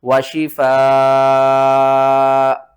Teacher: 5 الف کے مقدار کھینچ کر پڑھنا ہے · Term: مد متصل